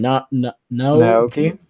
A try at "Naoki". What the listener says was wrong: You don't have to enunciate every syllable.